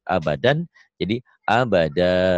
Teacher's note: Abadan ini jika dihentikan dibaca satu jadi abada mad iwad. Dua fathah dibaca satu jika dihentikan.